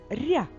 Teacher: моделі назвемо звуки в другому складі р а що ми чуємо приголосний р м'який а от замість букви я ми говоримо і чуємо звук а